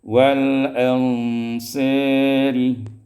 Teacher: Pada ayat yang ke-100 wal ansari baris bawah, maka dia diimalahkan fathah sad wal alif, diimalahkan fathah sad dan alif menjadi wal ansari